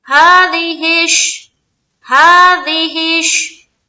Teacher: हा में खड़ा जबर है, एक अलिफ की मकदार के बाकदर खींचेंगे, दाल जेर दी और हा शीन जेर हिश, हो गया।